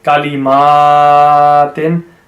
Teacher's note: Now the ma has to be prolonged. You can see the standing fatha.